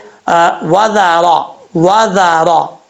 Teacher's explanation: اور جو ذال ہوتا ہے وہ ذال بھی بغیر سیٹی کے ساتھ پڑھا جاتا ہے